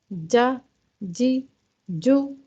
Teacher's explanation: ज़बान का जो बीच वाला हिस्सा है वो ऊपर के तालु की तरफ उठता है, ना सिर्फ उठता है बल्कि ज़बान का दरमियानी हिस्सा ऊपर के तालु के साथ बिल्कुल चिपक जाता है, कोई भी गैप ज़बान के बीच वाले हिस्से और तालु के दरमियान नहीं रहती, तो जाकर जीम अदा होता है। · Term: जीम का मखरज